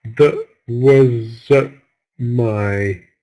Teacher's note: We don't stress the verb to be, was. So we're using the schwa sound here.